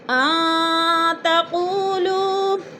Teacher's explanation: ان پہ اخفا ہو رہا ہے، نون ساکن کے بعد تا گیا ہے تو ادھر اخفا کریں گے۔ تقولوا، قو پہ وہ مدہ ہے اور لو پہ بھی وہ مدہ ہے۔